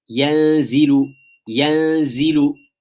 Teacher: The stretch of the ghunnah in yanzilu, it is longer because you have a noon there, which is alongside ikhfa, so it will be longer.